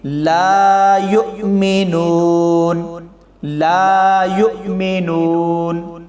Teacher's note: لا میں الف سے پہلے زبر آ گئی تو لا کو لمبا کر کے پڑھا جائے گا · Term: الف مدہ